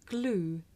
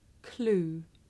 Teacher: it may be difficult to tell the difference between this voiced sound that you hear at the beginning of the word glue and its voiceless partner that you hear at the beginning of the word clue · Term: voiced consonant